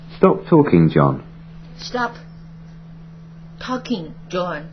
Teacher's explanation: 老师上课就会说别说了，Stop talking, John. 声调降调。那么降调应该是 impolite。